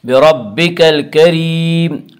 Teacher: الکریم کی را کو باریک پڑھا جائے گا۔ اس کا قاعدہ ہے کہ را کے اوپر زبر اور پیش آئے تو را کو پر پڑھا جائے گا، را کے نیچے زیر آئے تو را کو باریک پڑھا جائے گا، یا را کے نیچے زیر ہے اس لیے را کو باریک پڑھیں گے۔